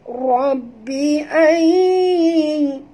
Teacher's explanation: nun mati bertemu ya, idgham al-gunnah, masuk dan dengung du harakat